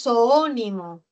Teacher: El acento está en la antepenúltima, es esdrújula, y las esdrújulas siempre se tildan, así que tildo la O.